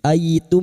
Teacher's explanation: mim sukun ketemu hamzah, idhar syafawi, mim sukun dibaca jelas tanpa bersenandung · fathah ketemu ya sukun, kita haluskan huruf lin